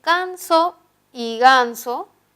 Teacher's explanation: Se están oponiendo el fonema K y el fonema Ga, que son sonidos oclusivos velares.